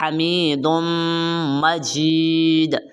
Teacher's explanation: حلق کے درمیان والے حصے سے ہا کو آپ نے نکالنا ہے